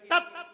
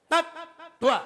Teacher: जब तुम्हारी ये जीभ की जो नोक है ये ऊपर के दांत पर चिपक जाए और चिपकी रहे तो आधा है, और चिपक करके नीचे आ जाए तो पूरा है। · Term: आधा ता